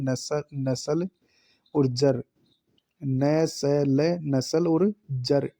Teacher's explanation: न स ज र ल का उच्चारण स्थान वात्स्य माना गया है